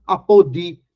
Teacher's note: Veja que apodi, a sílaba tônica é a última, mas não é acentuada. Por quê? Porque é oxítona terminada com semivogal.